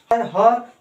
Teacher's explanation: ह सबसे शुद्ध काकल्य ध्वनि होती है